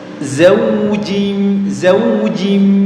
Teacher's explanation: Jim sama dengan syin tempat keluarnya di tengah lidah